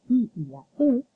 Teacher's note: porque la lengua cuando las va a pronunciar se desplaza hacia la parte anterior de la boca. Por eso se llaman también palatales o anteriores. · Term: vocales anteriores